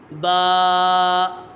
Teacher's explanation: اس کا مخرج ہے دونوں ہونٹوں کے تر حصے سے ادا ہوتا ہے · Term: حرف شفویہ